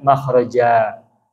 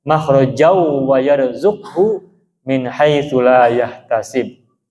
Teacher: karena ada fathatain lalu ada alif ya, berhenti waqaf, maka dibacanya menjadi panjang makhraja. Tetapi kalau disambung maka tidak usah panjang lagi, tidak usah dibaca panjang, tapi langsung masuk ke bunyi wawu kan. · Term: mad iwad